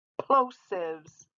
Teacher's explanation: p is a plosive it stops and it pops in my mouth these are a group of letters that stop and pop stop